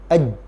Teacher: tiga huruf ini ketika diucapkan maka Tengah lidah kita naik ke arah langit-langit